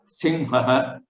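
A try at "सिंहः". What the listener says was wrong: Simhaha. So here Hakara and then again Visarga is there. So how to differentiate? Simhaha. You're aspirating more. Ha. Simhaha.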